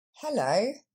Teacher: on voit que l'accent tombe sur la deuxième syllabe